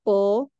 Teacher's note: keluarnya harus dengan mengangkat pangkal lidah